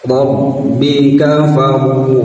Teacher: ro mati diawali harokat fathah, maka harus ditebalkan ro-nya ya